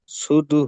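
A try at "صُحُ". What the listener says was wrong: সুদু নয়, সুহু। জি, সদ পেশ সু, হা পেশ হু, সুহু।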